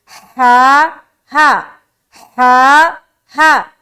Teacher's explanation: کہاں سے نکالنا ہے اس ہا کو؟ بالکل سینے کی طرف سے